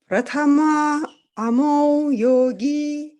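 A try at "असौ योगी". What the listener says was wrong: I don't know why you said Amo. It's Asau. Pratama Asau Yogi amu yogino, ami yoginaha.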